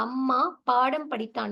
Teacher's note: என்ன அப்படின்னு பார்த்தோம்னா இப்ப அம்மா பாடம் படித்தான் இந்த மாதிரி சொற்கள்ல பார்த்தீங்கன்னா மகர மெய்யெழுத்தானது தனக்குரிய அரை மாத்திரை அளவுல வந்து முழுமையாக ஒலிக்கிறது